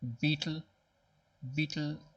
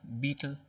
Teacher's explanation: beetle is two syllables beetle the first one gets the stress